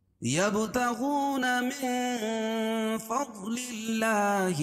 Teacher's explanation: نون ساکن کے بعد حروف اخفاء کے 15 حرفوں میں سے فا ہے تو یہاں ناک میں آواز کو چھپا کر پڑھیں گے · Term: اخفاء حقیقی